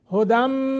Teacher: نون تنوین کے بعد میم مشدد ہے غنہ کریں گے